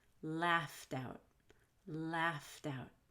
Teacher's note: now laughed wouldn't in a t as its past tense but when we link it to a vowel it'll sound like a d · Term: fast D